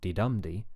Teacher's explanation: you can hear the pitch going up on the second syllable